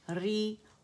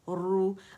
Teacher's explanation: رو جو کسرہ کے ساتھ ہے باریکی سے ادا ہوگی اور ضمہ کے ساتھ موٹائی سے